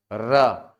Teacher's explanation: तो प्रकंपित वर्ण और लुंठित वर्ण प्रकंपित वर्ण जीहवा के आधार पर आप कहते हो और लुंठित वर्ण वायु के आधार पर कहते हो कि जीहवा कांप रही है इसीलिए प्रकंपित है और वायु लुढ़कते हुए मुंह से बाहर निकल रही है इसीलिए लुंठित है। · ठीक है, कंपन शब्द से बना है प्रकंपित। ऐसा वर्ण जिसका उच्चारण करते समय जिह्वा में कंपन हो, ऐसे वर्ण को कहा जाता है प्रकंपित व्यंजन। · और इसीलिए इसको नाम दिया जाता है लुंठित, क्योंकि जीभ जब कांप रही होती है, र का उच्चारण करके देखो, जिह्वा का सामने वाला भाग बहुत तेजी से वाइब्रेट करेगा